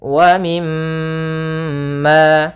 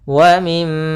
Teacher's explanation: Di sini ada mim berharakat tasydid, maka hukum tajwidnya kita namakan dengan gunnah. Cara membacanya yaitu suara mimnya ditahan dulu. Wa mim sepanjang 2 harakat.